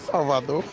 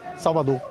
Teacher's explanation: O R, às vezes, perde vibração, quase desaparece.